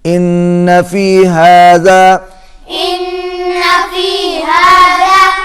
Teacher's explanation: نون پر غنہ ہوگا